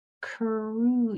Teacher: Now in cruise, you can hear that other sound of the long U. It's just that ooh part. Cruise. Your lips are already pushed out.